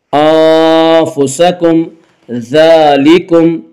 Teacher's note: ذال کے اوپر کھڑا زبر ہے، کھڑا زبر کو ایک الف کے برابر کھینچ کر پڑھیں گے